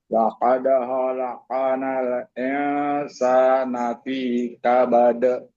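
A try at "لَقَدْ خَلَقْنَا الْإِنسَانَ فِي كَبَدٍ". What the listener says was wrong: Nah, biar lebih sempurna, perhatikan i-nya jangan tapi insa. I-nya sempurna lebih i lagi.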